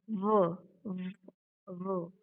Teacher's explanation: we can feel vibration, and that's why it is voiced